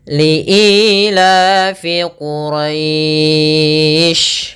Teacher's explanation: kita boleh memanjangkan untuk mad lin, boleh 2 harokat, boleh 4 harokat, dan boleh pula 6 harokat